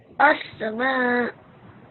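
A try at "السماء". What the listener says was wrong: Very good. Okay, well done.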